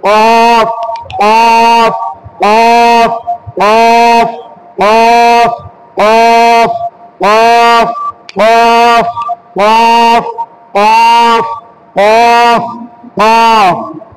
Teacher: জিবার গোড়া হতে গভীর আওয়াজে আমাদেরকে উচ্চারণ করতে হবে